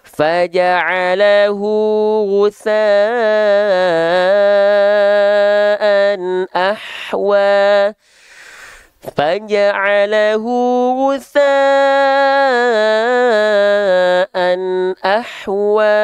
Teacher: Lalu dia diapit oleh dua huruf hidup dan huruf hidup keduanya bukan hamzah, maka dia adalah mad silah qasirah atau mad silah tawilah. Cukup kita baca dua harokat, maka itu adalah mad silah qasirah.